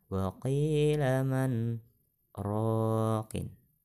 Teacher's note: nun mati dibaca dengan izhar dan nyata, tidak berdengung